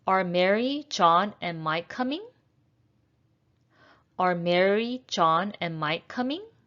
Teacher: this is a rising intonation this is a yes no question